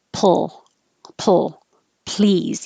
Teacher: you should have no delay between releasing the lips for the p and the l